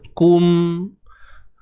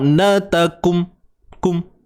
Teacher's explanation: Selesaikan bunyi kum tu dengan menyempurnakan juga sifat dengung pada mim tu.